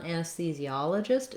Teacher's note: Then when we look at anesthesiologist, this one's tough because it has these same difficult sounds, but it has a different stress pattern and it's even longer. So our primary stress on anesthesiologist is on the ah syllable, and that letter O says the ah sound.